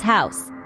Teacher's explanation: The 'au' is a diphthong and pronounced like 'ow' in how.